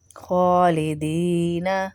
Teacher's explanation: خا کے اوپر بھی کھڑا زبر ہے، اس کو بھی کھینچیں گے ایک الف کے برابر. خالدین دینا فیہا ہا کے اوپر بھی الف ہے اور چھوٹا مد ہے، اس کو بھی کھینچیں گے.